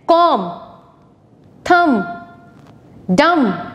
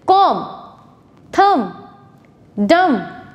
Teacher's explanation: अब हम ऐसे words पढ़ेंगे जिसमें हम B silent रखते हैं, यानी कि जब हम वो word pronounce करते हैं तो B की sound नहीं आती. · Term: silent B